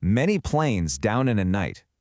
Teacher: That repetition of the n sound literally knits the whole line together, giving it this really smooth, connected flow.